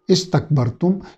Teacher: سین کو سیٹی کی آواز کے ساتھ